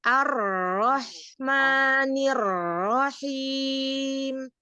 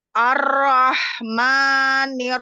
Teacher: Huruf tebal itu memang seperti o tapi tidak membulat gitu